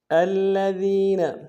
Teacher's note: الذین، حمزہ کو لام کے ساتھ ملانا ہے، لام کے اوپر تشدید دور دیں گے، ذال کو یا کے ساتھ ملانا ہے، یا مدہ ایک مقدار میں کھینچیں گے، ذال کو باریک ادا کریں گے